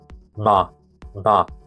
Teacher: In other terms, it's voiced. It should be nasal and bilabial and voiced. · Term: nasal one